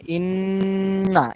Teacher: ইন্না এখানে ধরে রাখতে হবে, না বলা, নাতে টান হবে না। ইন্না শেষে টান হবে না, শেষে একেবারে যেহেতু হরকত তাড়াতাড়ি হবে। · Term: ওয়াজিব গুন্না